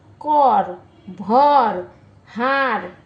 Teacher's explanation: কম্পিত ব্যঞ্জন যে ধ্বনি উচ্চারণের সময়ে জীব একাধিকবার অতি দ্রুত দন্ত মূলকে আঘাত করে বায়ুপথে বাধা সৃষ্টি করে তাকে কম্পিত ব্যঞ্জন বলে কর ভর হার প্রবৃত্তি শব্দের কর ভার হার প্রবৃত্তি শব্দের র কম্পিত ব্যঞ্জন ধ্বনির উদাহরণ আসলে মূলত এইযে বয়শূন্য র এটাই হচ্ছে কম্পিত ব্যঞ্জন বর্ণ।